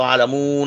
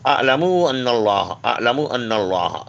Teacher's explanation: ہوتا ہے تو عالمون نہ پڑھیں، اعلم بالکل مختصر، جلدی پڑھیے، اگر عالمو پڑھیں گے تو واؤ کا تاثر آ جائے گا اس میں